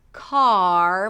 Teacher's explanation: So you start with the word car, K, ah, and then you lift the tongue up for the R. Car, make sure the tip of the tongue doesn't touch anything.